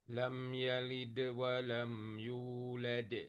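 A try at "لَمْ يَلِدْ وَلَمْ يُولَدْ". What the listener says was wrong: Ya, Masya Allah, bagus.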